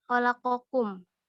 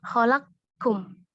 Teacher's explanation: huruf pertama harus dimatikan atau disukun terlebih dahulu, sehingga akan menjadi huruf kedua yang bertasydid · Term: idgham kabir